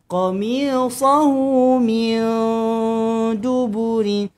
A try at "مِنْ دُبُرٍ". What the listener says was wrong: Nun kosong jumpa dengan dal. Dengungkan. Sembunyi. Bukan min. Bukan miu. Bukan mei. Tapi min dub. Min duburin wa.